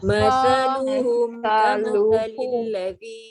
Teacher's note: kalau sa ni kita tak keluar lidah menyebutnya, kita tertukar dengan huruf sin yang berbaris atas. Nanti jadi sin nanti sa.